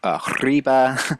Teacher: this R is actually a trill, so like as in Spanish